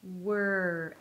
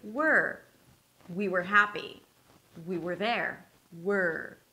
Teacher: So I round my lips for the 'w'. I keep them rounded, and then I just lift the tongue up for the 'r'.